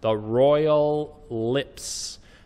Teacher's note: get those ending sounds royal lips don't drop that s and be careful the l of royal goes into the l of lips